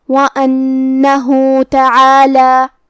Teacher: کلمت تعالی حرف العین کو ہمیں حلق کے درمیان والے حصے سے ادا کرنا ہے